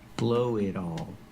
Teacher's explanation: The T in it changes to a fast D.